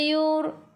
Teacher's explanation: Okey, yur sebelum ra ada baris depan. Kena baca dengan tebal, lidah diangkat ke atas, takhim.